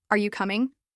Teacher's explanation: Imagine you're talking to a friend and you ask, "Are you coming?" If you say it with a flat tone, it might sound like a statement or even rude. But if you raise your voice slightly at the end, it becomes a clear question, friendly, and engaging.